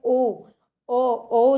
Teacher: कंठोष्ठ्य जो कंठ और ओष्ठ दोनों से बोला जाता है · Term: कंठोष्ठ ध्वनि